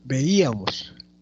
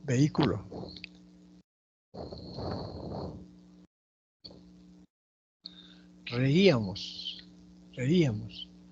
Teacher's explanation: las regas generales ya dijimos que el yato acentual es porque la intensidad de voz recae en la vocal cerrada puede ser en la i o puede ser en la u puede estar antes o después de la vocal abierta y esa